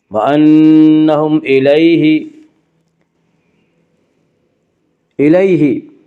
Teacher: وانہم الیہ یا لین وہ یا جو ساکن ہو اس سے پہلے زبر ہو، یا لین کو نرم آواز کے ساتھ جلدی پڑھیں گے